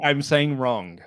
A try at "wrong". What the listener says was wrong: No, you said wrong with a K. It's wrong.